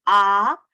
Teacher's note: o A é a única vogal aberta que temos, é um A verdadeiramente aberto